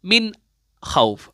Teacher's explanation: नून साकिन के बाद खा है, चूंकि खा इजहार हल्की के हुर्फ में आता है, तो फिर आप नून साकिन की आवाज को क्या करेंगे, निखार लेंगे